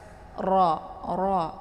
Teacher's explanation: Kemudian ra, jadi ra itu dibaca tebal ya, karena ada harokat fathah di sini ya. Ra yang berharokat fathah itu dibaca tebal. Jadi ujung lidahnya terangkat ke atas.